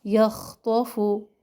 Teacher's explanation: خا اور طا موٹے حروف میں سے ہے اور یا اور فا جو ہے باریک